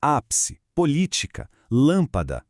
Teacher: E por último, a mais fácil de todas, a proparoxítona. Aqui, a sílaba forte é a antepenúltima.